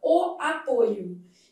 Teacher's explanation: Já o substantivo derivado do mesmo verbo apresenta a vogal o fechada, o apoio. Então, apoio substantivo apresenta a vogal fechada com esse timbre verdadeiro.